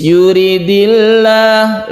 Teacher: ini lam jalalah ini kita baca tarqiq atau tipis yuridillah bacanya la bukanlah karena sebelumnya kan surah maka dibaca tarqiq